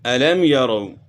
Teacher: یہاں بھی میم ساکن کے بعد یا ہے تو اس لیے یہاں بھی اظہار ہوگا